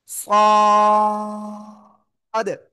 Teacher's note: জিহ্বার আগা, সামনের নিচে দুই দাঁতের পেট ও আগের সাথে লাগাবেন, লাগিয়ে একটু মোটা আওয়াজে উচ্চারণ হবে। কেমন? মোটা আওয়াজে উচ্চারণ করতে হবে।